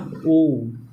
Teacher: इसका यह जो उ वाला होता है यह काफी लंबा खींचा जाता है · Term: प्लुत स्वर